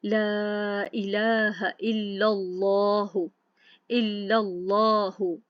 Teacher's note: پچھلے حرف کی جب ہم دیکھیں گے اگر اس کے اوپر زبر یعنی فتحہ ہے یا ضمہ یعنی پیش ہے، زبر ہے یا پیش ہے، تو اللہ سبحانہ تعالیٰ کے اسم میں لام جلالہ پر کر کے پڑھا جاتا ہے